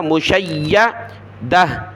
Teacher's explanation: شین کو یا کے ساتھ ملایا، یا کو سخت کیا. مشیدہ، دال زبردہ، تا دو زیر تین، دتن جب رکیں گے تو مشیدہ.